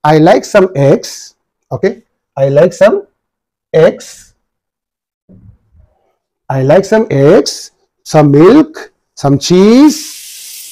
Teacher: on the items mentioned in the list, you know, you will have a rising intonation.